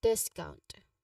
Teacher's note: discount has a stress on the first syllable